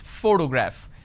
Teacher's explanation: When I pronounce this particular word, photograph, the correct pronunciation is photograph, which means I am stressing on this particular syllable, which is the first syllable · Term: word stress